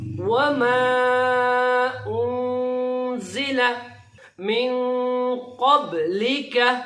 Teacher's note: مدہ کی خصوصیت یہ ہے کہ اس کو ہم جو چھوٹی مدہ ہے ہلکی والی مدہ اس کو ہم 3 الف کے برابر لمبا کھینچیں گے اور جو بڑی مدہ ہوگی اس کو 5 الف کے برابر ہم اس کو لمبا کریں گے.